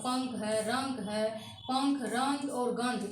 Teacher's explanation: ये अनुस्वार का उच्चारण नाक से निकल के आता है। ये अनुस्वार जो लगा हुआ है पंख है रंग है पंख रंग और गंध इसका उच्चारण जो हम लोग करेंगे तो अनुस्वार की मात्रा हमारे नाक से निकल के बाहर आती है।